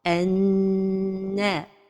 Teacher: Cet idgham se fait avec ghunna. Notons que al-ghunna est un son qui sort par la cloison nasale et il a un ton.